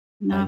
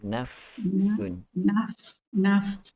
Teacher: Bahagian dua gigi kacip bahagian hadapan yang atas tu sentuh dulu kita punya kita punya bibir bahagian bawah. Perut bibir bahagian dalam. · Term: huruf fa